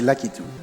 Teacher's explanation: I just say Lakitu because that's in French. There's no emphasis on the syllable.